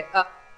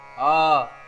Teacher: ಹ್ರಸ್ವ, ದೀರ್ಘ, ಪ್ಲುತ. ಹ್ರಸ್ವ ಅಂತ ಹೇಳಿದ್ರೆ ಅ, ಒಂದು ಮಾತ್ರ ಕಾಲ. ಆ, ಎರಡು ಮಾತ್ರೆ.